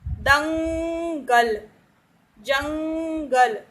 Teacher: इस वर्ण का उच्चारण नाक से होता है। जो अनुस्वार होता है मतलब आपकी बिंदी, ठीक है, इसका उच्चारण हम नाक से करते हैं। · तो ये जो अंग की साउंड होती है ये नाक के थ्रू निकलती है, ठीक। तो यहां पर ये अनुस्वार है।